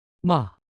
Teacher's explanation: 第四声要从高到低